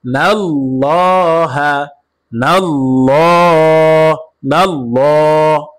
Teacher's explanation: ইউ খ দিউ নাল্লাহা, নাল্লাহ, নাল্লাহ, এই আল্লাহ শব্দ লামকে পুর করে পড়েছি, অর্থাৎ মোটা করে পড়েছি।